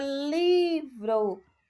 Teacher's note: Na palavra livro, o li é a sílaba tônica